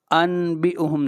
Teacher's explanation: حرف اقلاب صرف حرف با ہے، لہٰذا نون ساکن یا تنوین کے بعد اگر یہ حرف اقلاب با آ جائے تو نون ساکن یا تنوین کو میم سے بدل دیا جائے گا، یعنی لکھنے میں تو نون ہی رہے گا مگر پڑھتے وقت اسے نون کے بجائے میم پڑھا جائے گا۔